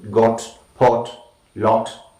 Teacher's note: Next we have the short O, back of the tongue, between open and half open, okay, O, rounded lips, short sound, O, like in got, pot, lot.